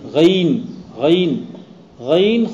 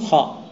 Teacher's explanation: ادنائے حلق کے نیچے والے حصے سے غین اور ادنائے حلق کے اوپر والے حصے سے خا، جس کے بعد حلق ختم ہو جاتا ہے جی۔